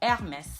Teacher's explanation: In French, the H is a silent letter whenever it's in front in the beginning of a word. So you don't pronounce it. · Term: silent H